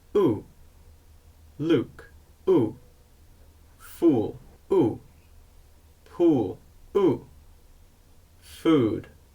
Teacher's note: did you notice how my lips are more rounded in the U as in Luke sound in both of these sounds your tongue should be raised at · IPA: uː